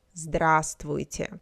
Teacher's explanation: the first v in the middle we don't pronounce the second we pronounce